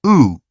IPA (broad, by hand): ʊ